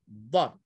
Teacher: lidah diletakkan di sebelah dalam, sebelah kanan, pipi dalam ataupun sebelah kiri